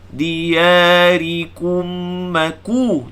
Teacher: Min dia ya 2 harakat. Ri baca bagi bawah, baca nipis. Diyarikum maku, jangan baca riko.